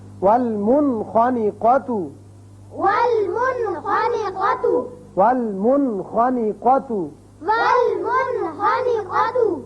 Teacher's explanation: نون ساکن کے بعد اگر ایک کلمے میں آئے تو یہاں اس کا اظہار ہوگا